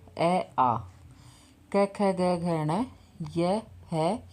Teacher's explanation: इन सभी वर्णों का उच्चारण किया जाता है कंठ से, इसलिए इन्हें कंठ्य वर्ण भी कहते हैं। इसका एक सूत्र भी आता है: अकु है विसर्जन या नाम कंठ है।